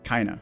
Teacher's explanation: sometimes you'll even hear the D sort of dropping there